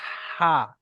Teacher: বড় হাটা গলার মাঝখান থেকে আবার হা।